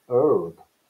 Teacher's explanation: Americans never took on the newfangled habit of pronouncing H in herb